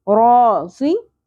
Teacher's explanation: ज़ौद के नीचे ज़ेर है, पुर करेंगे लेकिन शॉर्ट रखेंगे